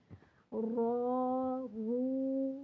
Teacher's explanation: یہاں یہ بات بھی ذہن نشین کر لیں کہ رو کے اوپر یا رو سے پہلے زبر یا پیش ہو تو رو کو پر پڑھیں گے، اس کا ساؤنڈ ہیوی ہو جائے گا، اور زیر ہو تو باریک پڑھیں گے